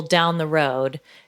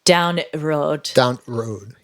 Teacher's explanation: particularly in that part of the world in yorkshire they often drop the word the